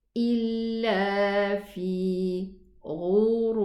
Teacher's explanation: Here we have elevated ghain and elevated ra.